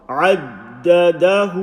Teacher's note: So the ha with an inverted dhamma, so we've got short vowel, short vowel, short vowel, and then at the end we've got a long vowel.